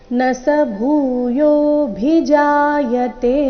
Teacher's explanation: ಭೂಯೋ ಎರಡು ದೀರ್ಘ ಭೂ ಮಹಾಪ್ರಾಣ ದೀರ್ಘ